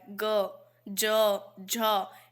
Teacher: ग को बोलेंगे तो ऐसे लगेगा जैसे मुंह में कुछ गूंज रहा है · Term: सघोष